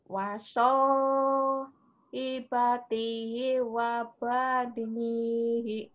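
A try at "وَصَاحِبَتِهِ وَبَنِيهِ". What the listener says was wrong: Ibu tadi di sini sepanjang, terus ada jeda, nggak boleh di sini. Terus di sini juga ada jeda. Mandasli bener panjang, tapi yang nggak ada jeda.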